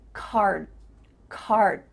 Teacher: my tongue is flat against the roof of my mouth to make the D but it's not coming out